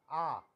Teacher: इसमें हमारा पूरा मुंह खुलता है, विव्रत आ। उसके बाद है अर्ध विव्रत।